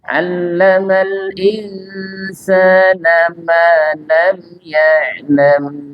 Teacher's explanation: Perhatikan Bapak Ibu, huruf ain ini huruf yang dalam pengucapan Indonesia susah kita temukan, ya, sehingga kita harus betul-betul fokus pada huruf ain karena bukan nga, bukan pula a, ya, tapi a, ya. Jadi dia makhrajnya di tenggorokan bukan di hidung, sehingga pastikan ketika kita mengucapkan huruf ain jangan keluar dari hidung atau khaisum, ya.